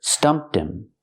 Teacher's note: The H is silent, so you hear stumped him. Pronounce the T and link to Tim.